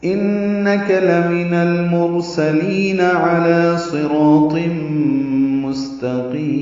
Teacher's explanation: ملانا ہو تو انک لمن المرسلین علی صراط مستقیم، علی عین وسط حلق سے نکالیں گے